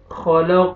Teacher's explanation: ख़लक़ क़ाफ को मोटा करेंगे और क़लक़ला डबल साउंड आएगा